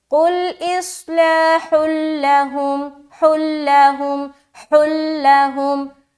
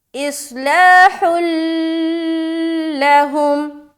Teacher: یہاں پر ہم کیا کریں گے، ادغام تام کریں گے، اور یہ ادغام تام بغیر غننے کے ہوتا ہے، یعنی کہ صرف ملانا ہے